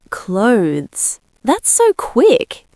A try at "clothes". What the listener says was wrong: Perfect. Clothes. 1 syllable, th-Z at the end.